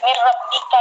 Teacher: Jadi mirrabbika bacaan idhom bihuna karena dimasukkan bila huna tanpa didengungkan